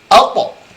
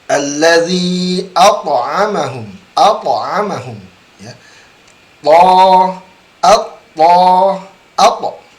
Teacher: huruf to pantulannya berbeda karena huruf to ini huruf tebal. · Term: qalqalah